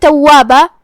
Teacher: واو پہ بھی تشدید ہے، 2 حرف کے برابر ہمیں واو کو پڑھنا ہے. آخر میں با پہ تنوین زبر ہے، یہاں بھی ہم تنوین زبر پہ روکیں گے تو مد الف سے روکیں گے، مطلب ہم اپنی آواز 2 مد کے برابر لمبی کریں گے.